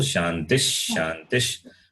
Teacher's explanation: The visarga undergoes some change, and that becomes the sound, sh, the shakara sound.